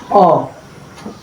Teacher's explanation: to pronounce the sound O, the tongue is in the floor of the mouth. The lips form a round shape. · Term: short vowel sound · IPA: /ɒ/